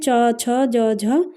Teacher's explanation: तालव्य है च, छ, यानी कि जो तालु से बोले जाते हैं उन्हें तालव्य कहते हैं।